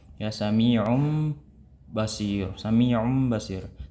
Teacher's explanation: Kita ganti tanwinnya kepada mim secara sempurna. Tanwinnya tidak berbunyi situ, maksudnya bunyi daripada tanwinnya itu menjadi bunyi mim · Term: iqlab